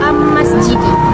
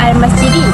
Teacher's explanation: Dalam perkataan ini, selepas huruf Alif Lam ialah huruf Mim, merupakan salah satu huruf Qamariyah. Oleh itu, huruf Lam perlu dibaca dengan jelas dan terang tanpa dimasukkan ke dalam huruf selepasnya. Contoh sebutan yang salah ialah Am-Masjidi, tapi bacaan yang betul ialah Al-Masjidi. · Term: alif lam al-qamariyah, Alif Lam Al-Qamariyah